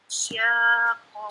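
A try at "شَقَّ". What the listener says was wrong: Sya, bukan sya. Sya. Nah, sya. Enggak ada i-nya ya. Sya langsung. Syaqo gitu. Panjang dulu datar, kemudian naik ditekan.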